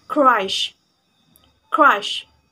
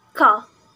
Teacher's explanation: voiceless velar stop sound ka